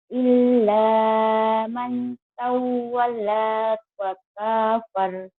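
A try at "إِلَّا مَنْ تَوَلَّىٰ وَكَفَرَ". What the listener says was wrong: Bukan. Nggak ada tasdid. Illa ma tawalla wa kafar. Illa, lanya double dan nyamber. Nyamber.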